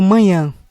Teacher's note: na palavra manhã a letra a ela é nasalizada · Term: nasalização